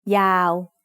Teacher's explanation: W at the end makes it a live syllable so it's also midtone